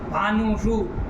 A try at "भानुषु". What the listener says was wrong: भानुषु नु दीर्घ।